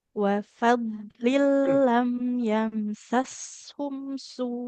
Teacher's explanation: Dotnya ditebalkan dan lebih mengalir suaranya.